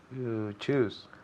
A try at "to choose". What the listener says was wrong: Muy bien, muy bien.